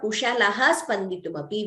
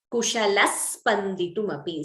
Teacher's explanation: So instead of Kushalaha Spanditumapi, we get Kushalas Spanditumapi. So you see the Visarga is replaced by an extra S. So that is Visarga Sakara Sandhi.